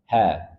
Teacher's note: kita keluarkan ha itu dari pangkal tenggorokan Ha jangan sampai Naik Ke ha karena kebanyakan kita dengar para